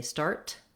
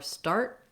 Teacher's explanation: I might say start with a T or start with more of an unreleased T